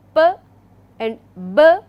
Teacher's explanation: the airflow is blocked right at the lips, right. There is a complete closure for a while, very briefly, like it is not going to stop there forever as I just mentioned, rather it is going to be there for a very brief time, and then it gets released. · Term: stops